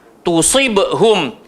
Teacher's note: Sod tetap sod. Hujung lidah, langgar belakang gigi, bawah gemuk. Tusibhum. So jangan jadi tusi, jadi sin.